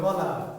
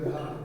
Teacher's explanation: খ এবং ঘ বলতে গেলে যেন একটু বাড়তি প্রেশার সৃষ্টি করতে হয়, কারণ একটু বেশি বাতাস বের করতে চাই আমি, ফলে একটু বাড়তি চাপটা বেশি দিতে হয়।